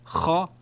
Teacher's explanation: So this is kha with a grating sound